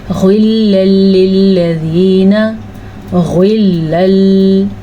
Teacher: غین کو پر پڑھنا ہے، لام پہ نہیں رکنا